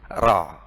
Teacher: Ra, begitu. Yang penting ada pengulangan, getaran. Jadi 2 maksimal 3, jangan sampai lebih. Tidak boleh gini, ra, tidak boleh.